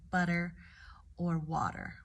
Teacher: we typically make it into a d vowel sound right so instead of making it that sharp T will change it to a D sound like butter or water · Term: soft D